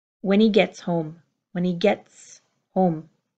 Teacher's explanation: there isn't a strong pronounced T. It's a held in, unreleased get